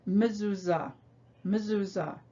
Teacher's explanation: when the schwa is in the first position of a word it makes a short sort of a half vowel sound